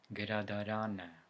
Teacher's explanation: stress falls on the vowel of the last syllable, except the cases when it's the vowel A.